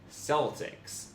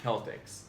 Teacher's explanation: The initial consonant of the English word Celt and Celtic is realized primarily as K and occasionally as S in both modern UK Standard English and American English, although S was formerly the norm.